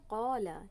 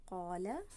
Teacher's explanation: اب ہم یہاں پر دیکھیں کلمہ لکھا ہوا ہے قالا، یعنی کہ الف مدی اور زبر کی صورت میں بھاری ادا ہوا ہے، یہ حرف موٹا استعلا ادا کیا ہم نے نا۔